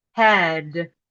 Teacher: German speakers tend to devoice the final voice consonant, which is a D, and say hat.